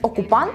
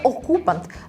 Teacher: неправильно поставлений наголос як наприклад замість окупант у відео читається окупант з наголосом на о